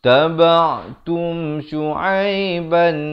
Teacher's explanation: Tum ni izhar syafawi. Sempurnakan saja bunyi mim mati itu terus masuk.